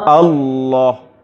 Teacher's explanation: lam makhrajnya menyimpang inhiraf ke makhraj nun saat membacanya dengan tebal. Kalau ro menyimpang ke makhraj lam ya saat mengucapkannya tipis.